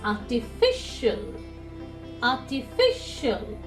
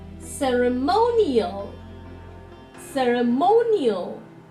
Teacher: Whenever there is an IL ending, from the right hand side, if you count, the 2nd syllable from the right hand side will be told more strongly